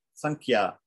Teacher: the way it's pronounced is flavored by the kh this is the letter that comes after it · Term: anishwara